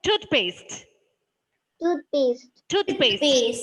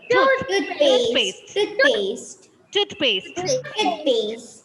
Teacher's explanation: Stress should be given to the first syllable.